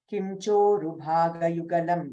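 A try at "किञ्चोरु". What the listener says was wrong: Second line, first word kinchoru, in sound, not im. In kinchoru.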